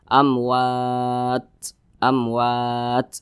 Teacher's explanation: karena huruf Ta ini salah satu huruf yang memiliki sifat hams